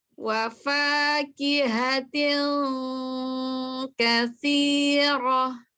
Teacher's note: hurufnya H besar dari tenggorokan bawah, tidak H kecil